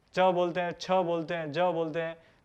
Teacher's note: तो इस तरह से च वर्ग जो है, च बोलते हैं, छ बोलते हैं, तो इसमें हमारी जो जीवा है वो तालु की ओर जाकर के, और वो तालु से स्पर्श होती है, तालु को स्पर्श करती है, इसलिए ये हमारा च वर्ग तालु के अंतर्गत, यानी तालु उच्चारण के अंतर्गत आता है।